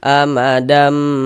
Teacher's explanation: Kemudian di dighunahkan, didengungkan. Jadi di bagian damnya itu suaranya itu kita tahan ya. Kita panjangkan sejenak sepanjang dua harakat.